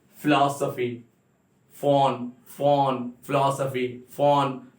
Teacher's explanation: अब इसमें आपके अपर लिप, अपर टीथ और लोअर लिप्स ये टच हो रहे हैं